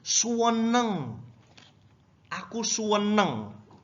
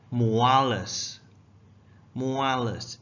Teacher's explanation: we always emphasize on the second syllable and have it go down in the way we pronounce it